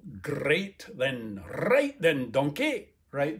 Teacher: well when we get to narrow transcription this r is actually the trilled r at the front what you might think of as a stereotype of scottish